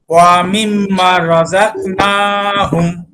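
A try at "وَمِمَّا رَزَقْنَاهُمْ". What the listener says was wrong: মিম্মা টান হবে, আমার সাথে আরেকবার পড়েন, তারপরে আপনি শোনাবেন।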